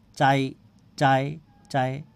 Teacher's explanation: এই আ টা যতটুকু উচ্চারণ করছি ই টাকে অতটুকু উচ্চারণ করছি ই টা কিন্তু উচ্চারণ একেবারে অল্প করছি